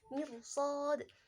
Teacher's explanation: ini ro-nya adalah ro tafkhim. Dia dibaca tebal karena ro sukun didahului kasrah dan setelahnya dia bertemu dengan huruf isti'la berupa shad. Kemudian mirsad ini adalah bacaan mad arid bisukun dan di situ juga ada qalqalah kubra.